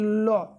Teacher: जीभ की नौक के दोनों तरफ से जब हवा आपका निकलने के कारण अगर कोई ध्वनि उत्पन्न होता है इसी को हम लोग कहते हैं पार्श्विक ध्वनि